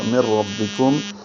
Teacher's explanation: یہاں یہ من ربکم میں ادغام غننے کے ساتھ نہیں ہے، بغیر غننے کے ہے، تو بلا غنہ ادغام ہوگا.